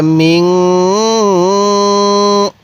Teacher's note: মিম লাগবে এই নুনের সাথে মিং, নাকের বাসি দ্বারা গুন্নাহ করব